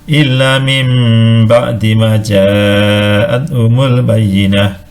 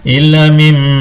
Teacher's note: Karena arti iqlab itu mengganti atau mengubah sesuatu dari bentuk aslinya. Jadi nun mati dan tanwin diganti dengan mim, diiringi hunah atau dengung sepanjang 2 harokat.